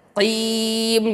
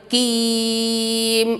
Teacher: Nah, di sini adalah huruf qaf, jangan huruf kaf. Qaf di pangkal lidah.